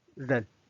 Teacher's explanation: Ren is a neutral tone, so there's no tone symbol,